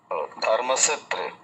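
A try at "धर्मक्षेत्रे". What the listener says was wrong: না, মূর্ধা সহের উচ্চারণ করুন, সে দন্তস্বয়েরই উচ্চারণ হয়ে যাচ্ছে আপনার, ধর্মাক ক্ষেত্রে।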